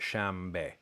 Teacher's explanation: My understanding is that there is what's called regressive assimilation of place, which means that when you have consonant clusters like this, the B is labial, is ba ba ba ba ba, and na is not. And what happens is you get a nasal voiced labial. So you get shambe.